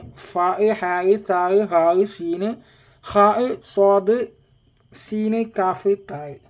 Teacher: പിന്നെ വല്ലാതെ ശക്തി കൊടുത്തു പറയുന്നില്ലെങ്കിലും പറയുന്നതോടൊപ്പം ശ്വാസം ഇങ്ങനെ പുറത്തേക്ക് വരും അപ്പൊ ഫാ എന്ന് പറയുമ്പോൾ കാറ്റ് വരുന്നുണ്ട് ഹായ് എന്ന് പറയുമ്പോൾ കാറ്റ് വരുന്നുണ്ട്